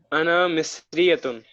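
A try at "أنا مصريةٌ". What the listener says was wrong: Very good. Correct.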